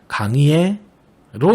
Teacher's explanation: 조사 의는 에로 발음해도 된다고 했네요. 그렇다면 원칙은 모두 의로 발음해야 하지만 발음하기가 무척 어려우므로 인정해준다라는 의미예요.